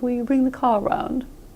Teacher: American Rs are right on the lips. They're so far out on the lips, they're almost not in the mouth at all.